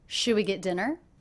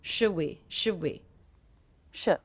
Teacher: One of the things I notice is I'm dropping the D sound.